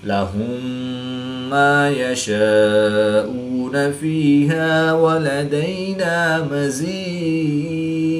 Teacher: میم ساکن کے بعد دوسری میم ہے تو یہاں پر ادغام شفوی ہوگا یعنی غنہ کر کے